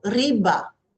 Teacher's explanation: riba has a stress on the first syllable.